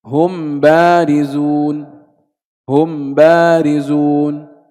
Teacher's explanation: إذن هناك قول آخر في الميم الساكنة التي وقع بعدها باء وهو الإظهار، أن نظهر الميم لا نخفيها إنما نظهرها. كيف نظهر الميم؟ قال أي من غير غنة، فيكون النطق هم بارزون، هم بارزون.